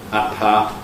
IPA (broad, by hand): ɑpɑ